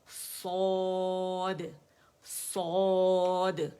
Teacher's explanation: اور یہاں پہ تھوڑا سا گیپ ہے کیونکہ ہم نے روٹ اٹھا لیا، زبان کا جو روٹ آف دا ٹنگ ہے، جڑ ہے، اسے نرم تالو کے قریب کر لیا، آگے سے مخرج پہ چلی گئی، بیچ میں ڈپ بن گیا، اس نے آواز کو اوپر چھت کی طرف پھینکا، آواز واپس آئی اور گونج گئی اور موٹائی کے ساتھ ادا ہوئی